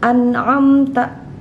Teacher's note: nun mati bertemu dengan huruf Ain ya dibacanya jelas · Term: izhar halqi